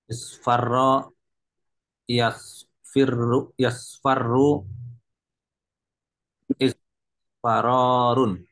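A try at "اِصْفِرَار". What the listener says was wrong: Isfira, bukan isfa. If'i. Nah, if'i. Ingat, ainnya kasrah.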